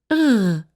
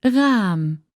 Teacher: your uvula, that thing that hangs down at the back of your throat, that's going to vibrate against your tongue. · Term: back R